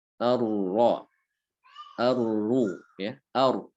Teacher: Bergetarnya ujung lidah pada saat mengucapkan huruf ro ya. Ar-ro, ar-ru ya, ar ada getaran di situ. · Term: sifat tikror